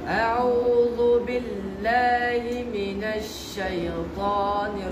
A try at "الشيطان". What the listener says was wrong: شيء نط شيء شيء ইয়ার উচ্চারণটা হচ্ছে না أعوذ بالله من الشيطان الرجيم